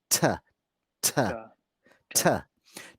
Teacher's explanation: So ta, don't let the T touch your teeth. Put the tongue just behind the top teeth on the roof of the mouth, and it comes out as t, t, ta, ta, t.